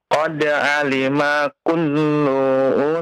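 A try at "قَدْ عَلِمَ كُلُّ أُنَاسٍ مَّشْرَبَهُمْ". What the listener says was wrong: Jangan dipanjangkan lamnya.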